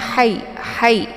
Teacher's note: Ini merupakan ha kecil ya, jadi ha pedas. Jadi cara bacanya hai ya, ada desis anginnya.